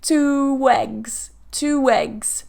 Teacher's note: we need to make sure that we're linking with a wha because we have two ooh rounded sound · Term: vowel vowel linking